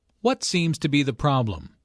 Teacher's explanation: Notice that the intonation falls at the end of the question. The doctor wants information, not a yes no answer.